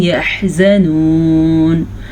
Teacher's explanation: آیت پہ ٹھہریں گے تو نون ساکن ہو جائے گا